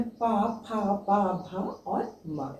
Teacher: पा, फा, पा, भा और मा, ये ओष्ठ से निकलता है। तो इसका उच्चारण स्थान भी आपको समझना जरूरी है।